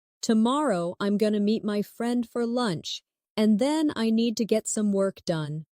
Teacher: Stress. Tomorrow. Meet. Friend. Lunch. And work. The other words should be softer and faster. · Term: natural rhythm of English